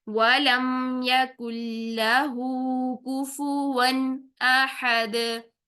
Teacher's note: تنوین کے لاسٹ میں نون ساکن کی ساؤنڈ پیدا ہو رہی ہے تو یہاں پر ہم اس کو نہیں ہلائیں گے